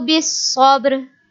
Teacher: Here Ba has Sukun sign, so we will make Qalqala on Ba.